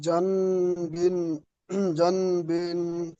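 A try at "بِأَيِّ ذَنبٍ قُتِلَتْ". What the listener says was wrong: বিআইয়ি জাম, এখানে জান নয়, জাম পড়তে হবে, বুঝে এসছে? নুন সাকিনের পরে যদি বা আসে, তাহলে নুন সাকিনকে মিমের দ্বারা পরিবর্তন করে একালিফ গুণনা করে পড়তে হয়। ইকলাব। এখানে নুন সাকিনকে পড়া যাবে না, মিম সাকিন করে পড়তে হবে।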